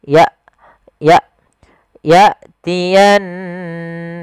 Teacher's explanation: Hamzah di sini ada sebuah sifat yang paling mencolok ya, ada syiddah dengan jaharnya, yaitu tertahannya nafas dan tertahannya suara. Maka ketika hamzah sukun dijelaskan ya, jangan sampai menyeret, jangan ya, tapi ya tiyannakum.